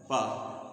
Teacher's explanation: पा जो है बाइलिबियल है, ओठों के सहारे से बोला जाता है। अगर आपके ओठ कटे हुए हैं तो पा को ब भी बोल सकते हो, बोला जाता है इसे।